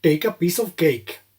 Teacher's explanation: many speakers of indian english do not aspirate